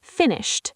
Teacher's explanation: Finished ends with a t sound because the sh is unvoiced.